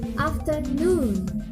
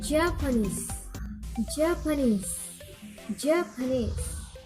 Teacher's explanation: Secondary stress in the first syllable and primary stress in the third syllable. All other syllables are unstressed, like afternoon. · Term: Stress parent 6